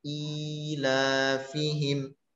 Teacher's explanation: hamzah yang harokatnya kasrah ini dibaca panjang dua harokat